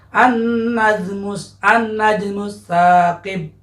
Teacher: nunnya huruf syamsiyah, alif lamnya akan jadi lebur ya.